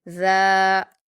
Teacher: ذالی کا نہیں پڑھیں گے، آپ پہلے سے جو بھی پڑھتے آ رہے ہوں، لیکن اب آپ جان گئے ہیں ذال کے مخرج کو، تو آپ اس کو نرمی سے ادا کریں گے اور اس کا مخرج دھیان رکھیں گے. ذال پر کھڑا زبر ہے، اس کو ہم الف مدہ کے جیسے 2 حرکات کھینچ کر پڑھیں گے